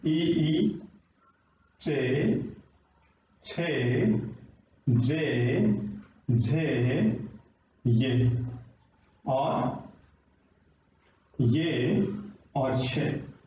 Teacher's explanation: तो जहां तालु को स्पर्श कर रही है हमारी जीभ, तो उसको हम तालव्य बोल देंगे।